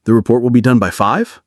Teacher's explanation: Rising pitch sounds like a question or a hope.